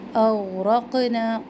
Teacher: قاف کو اب ہلانا ہے. قاف حروف قلقلہ میں سے ہے. نا یہاں پہ بھی مد منفصل.